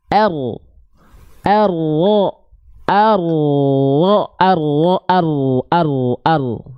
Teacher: Jadi bukan betul-betul dari ujung lidahnya, tapi dia dilafalkan dari punggung lidah. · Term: huruf ro